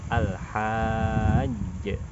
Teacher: Kita mengqalqalahkan huruf jim yang kedua. Maka dari itu suaranya seperti sedikit terjeda. Al-hajj. Tapi jangan terlalu lama.